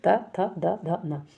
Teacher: तो जीभ कहां टच हो रही है? दांत पे टच हो रही है। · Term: दंत्य वर्ण